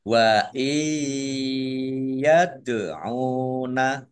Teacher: Mendengung ya, ditandai ya-nya ada tasdidnya, ditahan kira-kira 2 harokat biar tampak dengungannya